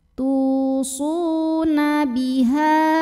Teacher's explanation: Su juga mad tabi'i karena ada waw sukun yang didahului dhammah, dibaca panjang sodnya 2 harokat.